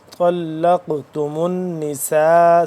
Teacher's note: नून मुशदिद है तो यहां पे हम इस पे गुना करेंगे